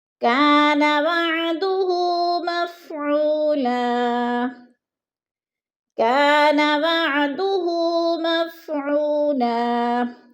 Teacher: الف خالی سے پہلے کاف کے اوپر زبر ہے تو الف مدہ کو ایک الف کے برابر کھینچ کر پڑھنا ہے، ایک الف 2 حرکات کے برابر۔